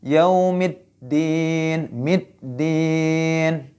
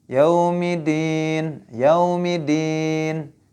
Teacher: Jadi jangan sampai tidak ada syiddahnya.